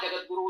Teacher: जगत ता के स्थान पर दा जगतगुरु उच्चारण प्रचलित है